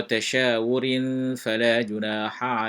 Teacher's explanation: Tanwin bertemu dengan fa adalah hukum ikhfa. Okey, disembunyikan sedikit bunyinya dengan dengung